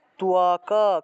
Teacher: কিন্তু সংস্কৃতে ত্বক উচ্চারণ করলে হবে না, সংস্কৃতে উচ্চারণ করতে হবে ত্বকা, কটাকে পূর্ণ উচ্চারণ করতে হবে